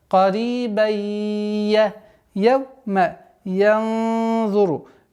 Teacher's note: Карибан, долгота в размере двух огласовок кесра, после которой у нас правило идгам, частичной ассимиляции в размере двух огласовок.